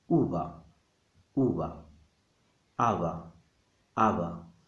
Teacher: because this sound B is between two vowels, it becomes very, very soft. Sometimes so soft that no native speakers cannot recognize it as anything and give up. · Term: the lazy bee